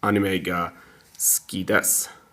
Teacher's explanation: So you don't really hear the oo part. The oo part does not vibrate as much as it needs to.